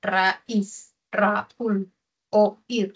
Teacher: Es un adiptongo porque no cumple lo que tiene un diptongo. No es que la abierta suene más, suena la cerrada. · Raúl y oír son agudas, ¿no? Porque tienen dos sílabas y su acento está en la última.